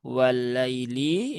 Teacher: lam yang pertama melebur ke dalam lam yang kedua. Nah, jadi dia termasuk lam syamsiyah atau paling mudahnya ya di situ ada tasdid kan di atas huruf lam.